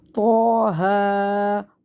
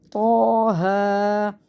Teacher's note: تو کو موٹا پڑھنا ہے، ہا کو سینے سے نکال کے پڑھنا ہے